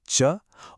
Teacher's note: अब जीभ ऊपर की तरफ मुंह की छत यानी तालू को छूती है।